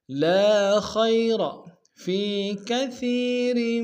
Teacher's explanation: فی میں یا مدہ ہے ایک اندام میں کھینچیں گے